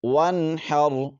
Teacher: نون ساکن کے بعد حا گیا ہے تو یہاں پر غنہ نہیں کریں گے جی اظہار ہوگا ، اس کو اظہار حلقی کہتے ہیں۔ تو یہ سمجھ لیجئے